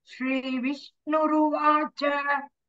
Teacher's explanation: The Visarga becomes Repa.